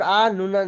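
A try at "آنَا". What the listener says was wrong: তাহলে এটা কি হবে, টানা হবে, তাই না?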